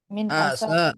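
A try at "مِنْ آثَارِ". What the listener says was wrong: Sanya panjang. Sanya panjang. A-nya panjang juga. Sanya juga panjang. Jadi dua panjangnya.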